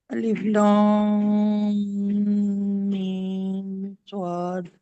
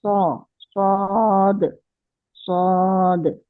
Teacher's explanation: होंठ गोल नहीं करना है, सिर्फ जबान की जड़ उठानी है।